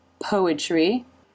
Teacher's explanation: there's the r consonant sound and then the corners of the lips pull back into the e as in she sound